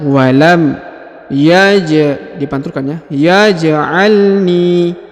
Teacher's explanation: Huruf ja dipantulkan karena berharokat sukun ya, atau berharokat mati.